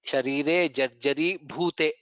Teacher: Sharire jarjari bhute, bha is mahaprana.